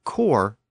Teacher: the word originally the word c RS was pronounced course but it gradually became core in the French dialect spoken around Paris as the S sound was dropped in a lot of words but the Normans retain the pronunciation course with the S sound